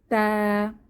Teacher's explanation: জিহবার আগা সামনের উপরের দুই দাঁতের গোড়ার সঙ্গে লাগিয়ে তা উচ্চারিত হয়